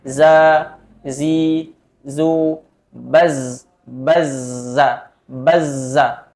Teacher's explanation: kemudian ada istifal rendah lidah infitah terbuka Allah Tengah lidah kemudian ada sirofir yaitu berdesis ketika mengucapkan hurufnya